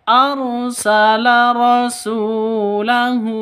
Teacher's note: Rosu panjang dua ketukan karena ada wawu mati diawali dengan dammaah atau wau mati sebelumnya berharakat dommah.